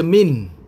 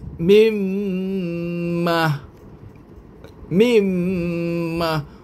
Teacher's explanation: tak boleh baca Min tak terus bunyi mim m mim Ma bunyi Nun hilang Terus tinggal bunyi mim aja